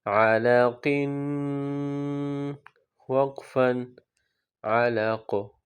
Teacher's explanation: قلقلہ بھی کریں گے، حروف قلقلہ ہے قاف، اور وقف میں جب ساکن ہو جائے گا تو یہاں پر قلقلہ کریں گے